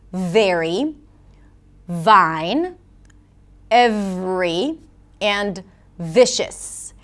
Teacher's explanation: So, the main thing is to recognize that there are two sounds and they're produced differently. The V, usually represented with a 'v' sound, is produced where the bottom lip touches the top teeth. There must be contact between the lip and the teeth, creating this friction sound.